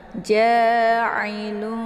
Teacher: Ini ain ya, bukan hamzah. Jadi ain ini letak posisinya di tenggorokan bagian tengah.